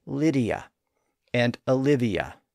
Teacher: that way if we keep them distinct from each other but in normal speech we tend to blur them together and that produces the Y sound in the middle